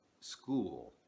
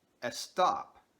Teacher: native speakers of Spanish often pronounce these words with an e sound at the beginning